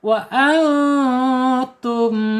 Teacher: Di sini ada nun sukun ketemu huruf ta. Bacaannya ikhfa hakiki. Harus dibaca samar dan ditahan 2 harokat.